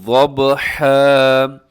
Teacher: والعادیاتی ضبحا، یہاں پر میں نے وقف کیا ہے دو زبر پر، اور وقف میں دو زبر کو ہم الف سے بدل دیتے ہیں، اس لیے ہم نے اس کو پڑھنا ہے ضبحا۔ یہاں با جو ہے وہ قلقلہ ہو رہا ہے، با حروف قلقلہ میں سے ہے، یعنی یہ وہ حروف ہیں جن میں کو جب ان کے اوپر جزم ہوتی ہے تو ان کو تھوڑا سا ہلایا جاتا ہے، اور اس ہلانے کو قلقلہ کہا جاتا ہے۔